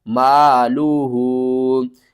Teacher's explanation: الف سے پہلے زبر ہے، حروف مدہ ہے، 1 الف کے برابر آپ نے کھینچنا ہے